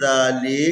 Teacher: ذال کا مخرج جو ہے نا، نوک زبان کو دونوں دانتوں کے بیچ میں لانا